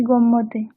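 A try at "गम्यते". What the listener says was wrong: গম্যতে নয় আবার, ওটার মতো গম ইয়াতে আলাদা উচ্চারণ করে একটু স্পিডে বলুন।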